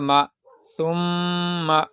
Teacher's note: اور یہاں پر میم جو میم کے اوپر بھی میم کے اوپر بھی اگر تشدید آئے تو میم کو بھی گنہ کرنا ہے، میم کی آواز کو ناک میں رکھنا ہے ایک الف کی مقدار